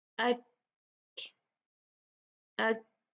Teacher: काफ में जब हम प्रोनाउंस करते हैं तो हवा निकलती है, हम्स होता है